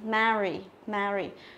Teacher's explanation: Mary, tức là nó cũng là âm e bẹt, không đọc là me được, không đọc thành âm e được, mà phải đọc thành âm e bẹt